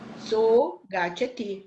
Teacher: o G, olha, é uma gutural, lá em cima, da família das guturais, sonora.